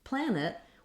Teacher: Then when we come to planet, we have two syllables, and there's a sound between the N and the T sound. Planet will have a little I or an sound there. It's a very reduced vowel because we have first syllable stress. So plan is long, and then it is short.